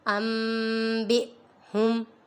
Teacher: نون ساکن کے بعد با آ رہا ہے، ادھر اقلاب ہو رہا ہے